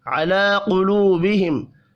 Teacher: علی قلوبہم لام کے اوپر کھڑی زبر ہے، 1 الف کے برابر کھینچ کر پڑھیں گے